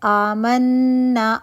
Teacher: آمنا، الف مدہ بن رہا ہے 2 کاؤنٹ. منا نون مشدد 2 کاؤنٹ کا غنہ کریں گے. نا الف مدہ بن رہا ہے.